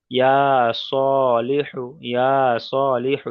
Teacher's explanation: এখানে ইয়া স এই দু জায়গা টানছে, বাকি লিহু টানছি না। তার কারণ হলো এই দুটো হলো খাড়া দাবার এসছে, খাড়া দাবার আলিফ মাদ্দা সমতুল্য, সেই জন্য এই দুটো অক্ষর টানছি, বাকি এই দুটো টানছি না।